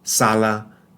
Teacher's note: this is a voiceless sound no vibration of the vocal cords